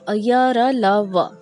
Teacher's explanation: इनके उच्चारण में जिह्वा यानी जीभ का पूरा स्पर्श मुख के किसी भी भाग में नहीं होता है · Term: अंतःस्वर व्यंजन